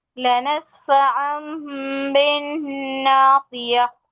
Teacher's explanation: हम नून को मीम से बदल कर पढ़ते हैं ना। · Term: इकलाब